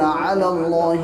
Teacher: اب آپ کو لگ رہا ہوگا کہ یہاں علی اللہ یا بھی تو ہے. دوستو یہ یا اور یہ الف یہ سائلنٹ ہوتے ہیں، ڈائریکٹ لام کو لام سے ملا دیں گے